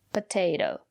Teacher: And the second letter T is pronounced as a fast D. Potato. Because the syllable after the second letter T is not stressed.